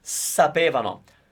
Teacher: Careful with the stress of the word because, as you can hear, it's at the very beginning of the word and it might be a little difficult to pronounce.